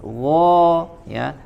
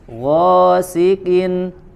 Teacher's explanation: gha-nya pada huruf ghain langsung dibaca tebal lagi. Gha ya, diarahkan suaranya ke langit-langit.